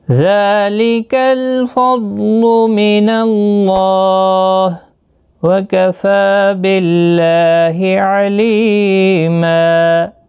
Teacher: ملانے کی صورت میں یہاں پر ادغام یرملون ہوگا، تنوین کے بعد یرملون کا یا آیا ہے، ادغام مع الغنہ ہوگا